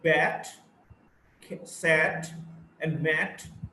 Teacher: It's a front, unrounded, short vowel.